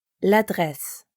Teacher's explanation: just like we connected le and appartement to make l'appartement, we connect la and adresse for l'adresse